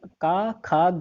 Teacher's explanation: जो का वर्ग होता है उसको कंठ से बोला जाता है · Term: कंठ वर्ग